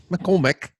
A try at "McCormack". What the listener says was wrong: Oh, you got to pronounce the A. The Mac.